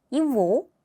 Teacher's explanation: 이 그 발음이 v 발음으로 나고요.